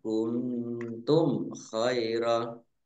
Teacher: Nun sukun bertemu dengan huruf ta, bacaan ikhfa dibaca samar-samar. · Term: izhar safawi